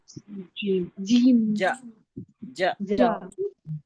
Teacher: जबान के बीच का हिस्सा ऊपर के उसके मुकाबिल ऊपर के तालू से जब लगता है तो जीम शी और या अदा होता है